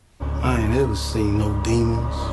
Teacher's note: And in Sinners, Jordan's accent is always non-rhotic. Listen to how he drops the R at the end of ever